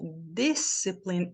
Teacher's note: A primeira sílaba é forte. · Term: sílaba tônica